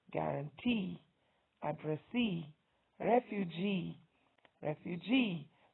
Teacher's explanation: three-syllable words that have the stress on the third syllable are guarantee, addressee, refugee, refugee.